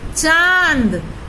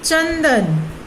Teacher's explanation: जब हम चंदन बोल रहे हैं तो च के ऊपर हवा अधिक स्पर्श, नाक के ऊपर अधिक स्पर्श कर रही है, लेकिन चांद बोल रहे हैं तो नाक और मुंह दोनों को समान रूप से हवा स्पर्श कर रही है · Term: अनुनासिक